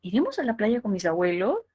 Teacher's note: la interrogativa como la última oración que sería iremos a la playa con mis abuelos que tiene tono hacia arriba que tiene tono ascendente